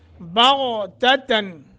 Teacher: تأتیہم الساعہ حمزہ ساکن ہے جھٹکا دے کے پڑھیں گے بغتتاً غین کو موٹا نون تنوین کے بعد حمزہ ہے اظہار کریں گے